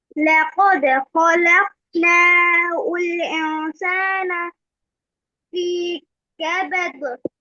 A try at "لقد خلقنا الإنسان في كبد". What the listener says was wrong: Okay, but it's not ul insana, it's hamzatul wasl. So you join khalaqnal insana. Khalaqna ul insana. No, it's not dhamma on the hamza, it is hamzatul wasl. لقد خلقنا الإنسان في كبد.